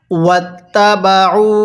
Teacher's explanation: দেখুন আইনের মধ্যে কিন্তু এক আলিফ টানতে হবে, কারণ পেশের পরে যখন এরকম ওয়াও সাকিন দেখবেন তখন এক আলিফ টানতে হয়।